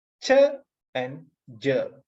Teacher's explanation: these are affricates so here the release of the air is very gradual it's not fast